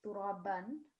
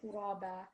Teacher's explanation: the fathatain, it becomes 2-second prolongation